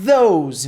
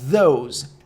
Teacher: Repare como o som de Z com a língua presa cria esse som de TH. Então, those.